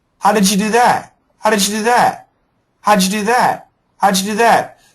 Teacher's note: if we're going to say it quickly, we're going to have that j sound. That j sound is going to be pretty strong.